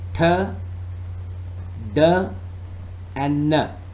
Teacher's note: the tongue tip touches the alveolar ridge and cuts off the airflow at that point. That is the manner of articulation.